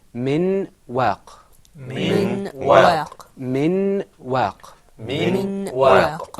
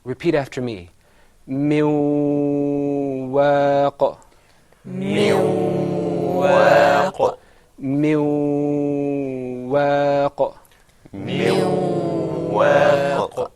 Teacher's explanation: You see, that second time you didn't hear the noon. The noon wasn't completely articulated.